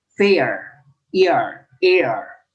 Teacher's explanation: We have the A sound, pay and make, but fair contains a diphthong.